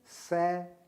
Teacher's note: दंत्य स, जीभ को दांतों से छू करके बोलिए